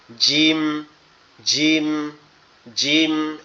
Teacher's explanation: জিহ্বার মধ্যকান উপরের তালুর সঙ্গে লাগবে। জিহ্বার মধ্যকান উপরের তালুর সঙ্গে লাগবে, লেগে উচ্চারিত হবে শক্ত আওয়াজে, এরকম দাঁতের পাটি দুটো একসাথে লেগে থাকবে শক্তভাবে।